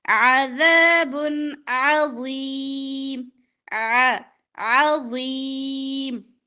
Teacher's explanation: عین کی ادائیگی وسط حلق سے ادا ہوگی